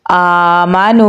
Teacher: वाव हरूफ मद्दा में से है तो इसे हम एक अलिफ के बराबर लंबा पढ़ेंगे